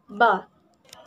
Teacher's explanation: voiced bilabial stop sound ba